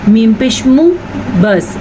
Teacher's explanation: جو میم کے اوپر پیش ہے اس کو کسی صورت میں آپ نے ذرا سا بھی لمبا نہیں کرنا، کیونکہ یہ صرف پیش ہے، الٹا پیش نہیں ہے۔